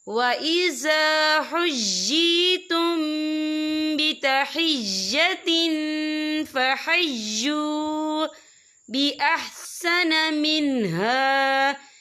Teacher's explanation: وَإِذَا حُيِّيتُم بِتَحِيَّةٍ، یہ دیکھیں بِتَحِيَّةٍ، تا کے نیچے تنوین ہے، تنوین کے بعد جو ہے فا آ رہا ہے، اور فا جو ہے اکفا کا ورڈ ہے، تو ہم یہاں اکفا کریں گے، تنوین کی آواز کو ناک میں چھپائیں گے۔